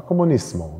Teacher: Da ist es so, dass so ein Wort wie Kommunismus eben auf Italienisch Comunismo, Spanisch Comunismo, ja, dass da tatsächlich das S zu S wird, ne, im Italienischen und im Spanischen. Allerdings gibt es im Spanischen auch die Aussprache Comunismo mit nicht stimmhaften S. Ich glaube, die mit stimmhaften S ist häufiger, aber es gibt auch die andere. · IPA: [-sm-]